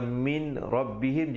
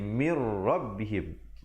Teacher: Ada nun mati ataupun tanwin, iaitu baris 2 datang selepasnya huruf ra ataupun lam, maka bacalah dengan idgham bila gunnah, iaitu masuk tanpa dengung. Asalnya min rabbihim jadi mir rabbihim, masuk terus di atas ra itu.